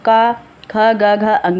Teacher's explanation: कंठ और निचली जीभ के स्पर्श से बोले जाने वाले जो वर्ड हैं ये कंठ कहलाते हैं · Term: कंठ ध्वनियाँ